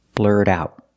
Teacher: blurt out whatever you're thinking we see that tea and blur is pronounced as a fast D because it's after an r and before a vowel blurred out the Tian out is a stop T because it's